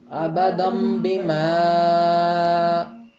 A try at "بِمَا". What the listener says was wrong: ابدم بما کیا فرق تھا کہ بیما جو ہے اس کی آواز بیما کی بجائے بیما ہو گئی، یعنی ناک میں نون کا غنہ کر دیا آپ نے.